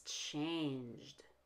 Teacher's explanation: change ends in a j sound not a t or a d it's one syllable